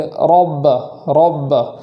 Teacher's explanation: رب میں را کو پور پڑھیں گے اور پور کرنے میں ہونٹوں کا سہارا نہیں لیں گے